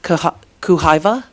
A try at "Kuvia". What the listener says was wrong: Kuvia. Yeah, the V comes before the H.